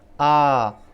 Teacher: विवृत, जैसा पहले मैंने अभी आपको बताया कि विवृत का मतलब होता है मुख का पूरी तरह से खुलना, फैलना। आ, जब इस वर्ण का आप उच्चारण करेंगे आपका मुख पूरी तरह से खुल जाएगा